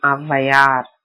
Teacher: அகரத்தின் பின்னர் வகரமை வந்தும் அவகாரம் போல ஒலிக்கும்.